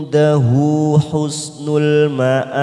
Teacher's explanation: nun sukun bertemu dal namanya ikfa aqrab, kita samarkan bunyi nun sukun 3 ketuk